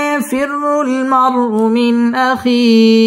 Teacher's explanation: ইয়াফিরুল মার রপুর হবে মার উ মিন ইজহার গুন্নাহ ছাড়া স্পষ্ট করে পড়তে হবে